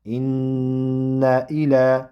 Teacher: Inna va bu nun tashdid bilan buni ozroq ushlab turiladi.